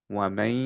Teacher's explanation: আমরা এখন পড়বো হচ্ছে এইভাবে এটাকে, ওয়ামান ইয়ামাল, ওয়ামান, ইয়াটাকে কমপ্লিটলি উচ্চারণ না করে আমরা হচ্ছে নেজাল একটা সাউন্ড বের করব, ওয়ামাই, বিকজ নুনটা ইয়া এর সাথে মার্জ হয়ে যাচ্ছে। ঠিক আছে, আমরা ইয়া উচ্চারণ করব, নুন উচ্চারণ করব না, কিন্তু একটা নেজালাইজেশন দিয়ে।